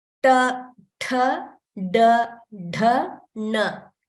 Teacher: the tongue is curling back and upward, and it is approaching the root of the mouth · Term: ta varga